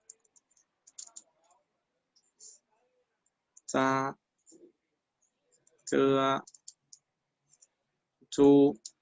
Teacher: Por ejemplo, si nosotros decimos za, za, ese sonido de la Z es como vibrante. Es muy similar a este de la D y la S, pero no expulsamos aire al mencionar esta letra.